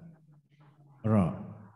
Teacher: Ra itu ya harus bergetar. Ra 2 getaran. Tidak boleh lebih dan tidak boleh kurang.